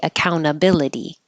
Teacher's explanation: you don't have to say this T here account because it follows the N so you could leave it out and say accountability or with